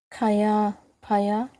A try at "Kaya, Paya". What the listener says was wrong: So Kaya, Paya. Well done.